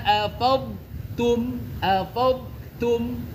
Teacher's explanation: Nah, tarik ya. Jadi jangan sampai huruf dolnya itu melebur atau idgham ke huruf ta.